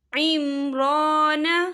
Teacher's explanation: را کے پر کھڑی حرکات ہے تو ہم اسے 2 یا 3 حرکت کے برابر کھینچیں گے۔